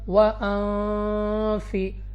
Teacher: اب سب سے پہلے ہمارے پاس یہاں پہ ہے نون ساکن، اور نون ساکن کے بعد ہے فا، حروف اخفا میں سے ہے۔ اخفا کا قاعدہ ہے یہاں پہ، تو ہم نے یہاں پہ غنہ کر کے پڑھنا ہوگا